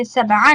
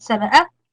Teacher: Ain is from the middle of your throat. Make sure you say Sab'a, not Sab'a.